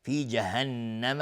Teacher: نون مشدد 2 حرکت غنه میدیم.